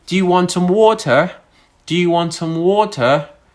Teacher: Notice that my voice went up in the part water.